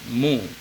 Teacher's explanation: Kalau kita baca mus, kesalahan pada huruf mu. Karena huruf mu ketika dia baris dhamma, bunyinya harus dimonyongkan.